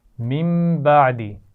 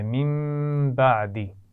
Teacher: نون ساکن کے بعد با آ گیا ہے، تو یہاں پر نون ساکن کی آواز کو میم سے بھی بدل رہے ہیں اور غنہ بھی کر رہے ہیں